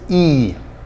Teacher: very similar to spanish e except a little bit longer in duration in english